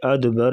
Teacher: ادبر یہاں پر قلقلہ کریں گے